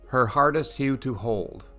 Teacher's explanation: the H sound that is repeated is all breath